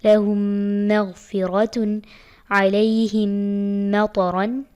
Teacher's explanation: میم ساکن کے بعد میم آ رہا ہے تو غنہ کرنا ہے